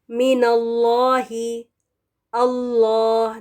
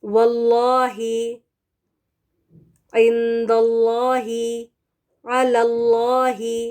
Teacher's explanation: تو پہلا کیس یہ ہے کہ جب لفظ الجلالہ یعنی اللہ کے نام سے پہلے زبر ہو یا فتحہ ہو، تو اللہ کے نام میں جو لام ہے نا وہ پر یا موٹا ادا کرنا ہے، ٹھیک ہے، موٹا پڑھا جائے گا۔ Whenever the letter before Allah's name has a zabar or fatha, lam in لفظ الجلالہ is read heavy